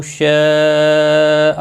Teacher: مد متصل ہے 4 الف کے برابر کھینچ کر پڑھیں گے